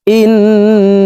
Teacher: হারকতের বামে নুনের উপরে তাসতদ আছে এই কারণে এই হামজা তাসদ নুনের সাথে তিন সেকেন্ড পরিমাণ গুন্নাহ করে ধরে রাখব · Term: ওয়াজিব গুনা